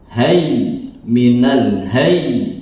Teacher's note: Hayyi di waqaf menghilangkan harokatnya saja, tasydidnya ada. Hayy minal hayy, bukan hay ya, bukan hay tapi hayy.